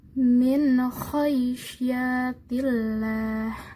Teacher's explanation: Sehingga kho-nya dibaca jelas, tidak samar maupun tidak dengung